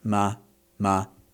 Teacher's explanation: unemphasized, sitting at about the middle of your tonal range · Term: non-tone